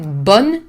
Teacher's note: I pronounce it bon, but it's only to link with the vowel A in accent.